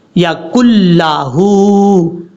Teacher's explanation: نون کو چھوڑ دیں گے، کاف کو لام سے ملائیں گے، یکن لہو، ہا کے اوپر الٹا پیش ہے، لمبا کریں گے ہا کو، یکن لہو۔